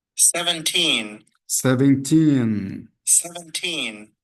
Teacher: Lembrando que a última sílaba aqui nesse caso, tá? A última sílaba é a sílaba tônica.